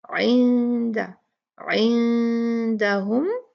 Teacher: اس کو، اندہ اندہ نہیں پڑھیں گے، اندہ نہیں، عندہ عندہ، عین کو بھی واضح کرنا ہے، اس کو الف کے جیسے اندہ نہیں پڑھنا ، اندہ اندہ نہیں، عندہ عندہم، 2 کاؤنٹ غنہ کریں گے،